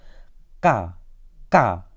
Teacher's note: konsonan plosif velar diucapkan dengan aspirasi terlemah